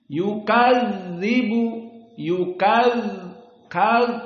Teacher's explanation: maka yukazzibu tidak boleh keluar nafas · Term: majhur, sifat al-jahr